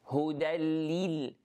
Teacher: the kasra of the lam, we need to pronounce it fully